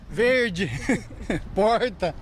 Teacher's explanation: O R é grande demais. Este é o R retroflexo, o popular R caipira.